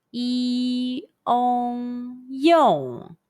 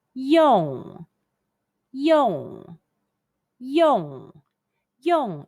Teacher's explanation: the yong sound and the high falling fourth tone, the angry tone, all together